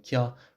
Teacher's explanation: When followed by a y sound, it includes more consonants, like k becoming kya or n becoming nya. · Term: palatalization